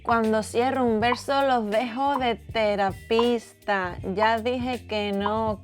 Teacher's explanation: aspirating the final Ss, shortening words a lot and pronouncing the C as an s.